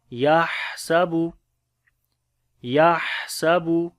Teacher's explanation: ہا کو گلے کے درمیان والے حصے سے پڑھیں گے اور سانس بھی جاری ہوگا ، صفت حمز، یحسب یحسب ان، نون کے اوپر شد ہے،